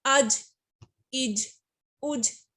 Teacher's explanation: حمزہ جیم زبر اج، اب جیم بھی بلو کلر میں ہے تو اٹس مین کہ جیم بھی قلقلہ لیٹرز میں سے ہے، تو جیم کو بھی ہم جب پڑھیں گے تو اس کو قلقلہ کریں گے، اس کو ہلا کے پڑھیں گے ہم